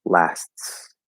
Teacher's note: there's no actual t there there's the illusion of the t